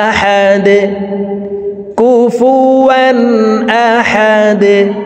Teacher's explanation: দাল যেহেতু কলকলার হরফ নিচের দিকে ধাবিত করে ধাক্কা দিয়ে সাকিন করব।